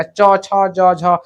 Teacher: च छ ज झ पढ़ोगे ना तो सब तालु से आवाज निकलेगा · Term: तालव्य वर्ण